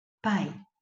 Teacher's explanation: você tem o som de I na mesma sílaba com o som de A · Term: semivogal